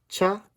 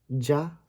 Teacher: cha and ja are technically affricates, which is a plosive immediately followed by a sibilant